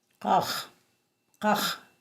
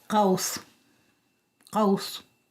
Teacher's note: The next sound is the Q sound. This is actually a voiceless uvular stop in the language. It's sort of like a K sound, but is articulated further back in the mouth.